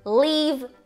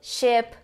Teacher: Esse segundo I que a gente tem um pouquinho abaixo desse I longo é um I mais curto e que ele tá entre um I longo e um E